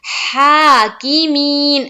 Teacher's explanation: ہا کو ایک الف کے بقدر کھینچیں گے. کی کو نہیں کھینچنا ہے، زیر کی حرکت ہے. می کو لیکن کھینچیں گے